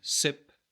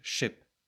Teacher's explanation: distinguishing a frontal, sharp s and a more back, darker sh